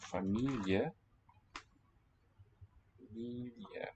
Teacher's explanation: Stressed is me, and it's long.